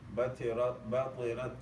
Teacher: you don't close the makhraj totally, but you let some air flow. That flow of air on the letter is called hams.